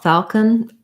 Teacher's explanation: So basically no vowel there or a tiny little schwa going from the K to the N, falcon. Falcon, that's definitely a dark L, and I'm not overly pronouncing that L. Falcon. I do mark it by changing that vowel, kind of doing an A with a schwa.